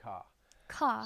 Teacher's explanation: you're also going to drop the r in in many words like the well the word car I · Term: Boston accent